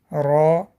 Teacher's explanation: «Ра» дотрагивается верхней части кончика языка до неба с легким дрожением. С фатхой читается «ра», читается твердо с фатхой.